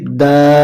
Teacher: তিন আলিফ টেনে পড়তে হচ্ছে চিকন চিহ্ন দেখলেই আমরা ওই হরফকে তিন আলিফ টেনে পড়বো তাব্বা